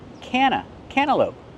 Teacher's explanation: when you have N T between vowels, you don't really hear the T. Cana cantaloupe.